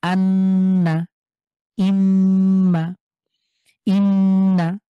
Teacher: এবং নুনের উপরে তাসদিদ হয় তাহলে এই দুটি হরফ একটি ব্যতিক্রম এই দুটোতে আমরা গুন্না করে পড়বো এটাকে ওয়াজিব গুন্না বলা হয়